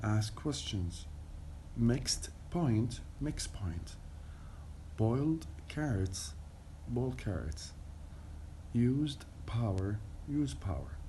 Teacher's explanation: there's in the present tense ask question instead of asked questions in my speech we drop the T sound so it becomes as if it were in present form